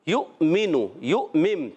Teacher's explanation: آگے آپ حمزہ دیکھ رہے ہیں، واو کے اوپر چھوٹا سا حمزہ ہے اور حمزہ پر جزم ہے، تو حمزہ کو جھٹکے سے ادا کریں گے